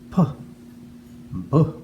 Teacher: for those two sounds our lips touch together and pop open